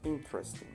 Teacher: Si escuchan bien, el énfasis está en in,